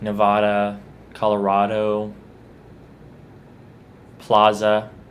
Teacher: There are very few words where I make the ah sound with the A